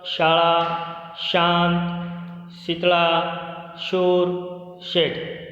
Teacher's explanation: શ બોલતી વખતે જીભ નો વચ્ચેનો ભાગ ઉપર તાળવાને અડાડીને બોલાય છે